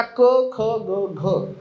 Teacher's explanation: ही 4 अक्षरं आपल्या घशापासून, कंठापासून निर्माण होतात बोलताना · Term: कंठ व्यंजने